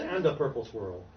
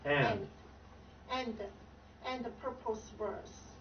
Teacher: Is A-N. You're pronouncing A-N-D as A-N-D-A. You're saying anda. You're adding a syllable.